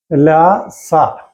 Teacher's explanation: ലത്തുലസാനം ദന്ത, ല് എന്നുള്ള സ്വരം, തവർഗം, ല, സ, ഇവയൊക്കെ ദന്തം കൊണ്ടാണ് ഉച്ചരിക്കേണ്ടത്. പല്ലിനെ തൊടുമ്പോഴാണ് അത് ഉച്ചരിക്കപ്പെടുന്നത്.